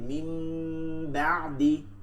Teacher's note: গুন্না সহিত নুন সাকিনকে মিম সাকিনে পরিবর্তন করিয়া পড়তে হয়। ইকলাব অর্থ কিন্তু পরিবর্তন করিয়া পড়া।